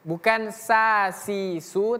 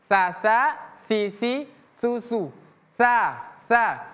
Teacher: Bukan sa si su tapi tsa t. Ujung lidah bertemu gigi seri atas.